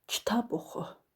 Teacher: kitab sözünü oxu sözünə nisbətdən daha qüvvətli deyirəm. Deməli burda kitab məntiqi vuruq hesab olunur. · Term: məntiqi vurğu